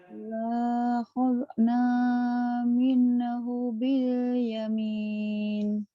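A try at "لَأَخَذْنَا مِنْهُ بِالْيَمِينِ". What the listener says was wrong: A-nya gak kebaca. La akhad. Bukan lahad. La akhadna minhu bil yamin.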